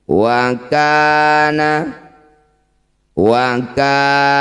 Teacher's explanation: Lafaz Allah didahului harakat fathah. Maka lamnya baca dengan tafkhim.